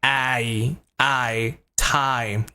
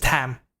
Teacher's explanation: sound I here is a dip thong so you have to move it from the a sound to the e sound so it's like I I time not just Tam right time